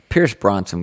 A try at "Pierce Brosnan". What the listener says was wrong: Is it Brosnan? I think you said Bronson.